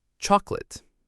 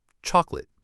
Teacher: But we stress the first part, chalk. The middle O disappears.